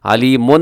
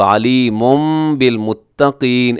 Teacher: علیم بالمتقین، علیمن کے آخر میں تنوین، تنوین کے بعد ہے جی با، تو جب بھی آئے تنوین کے بعد با تو ہم یہاں پہ اقلاب کرتے ہیں، تنوین کو میم کے ساتھ چینج کر دیتے ہیں، علیمن نہیں بلکہ اب علیم بالمتقین ایسے پڑھیں گے۔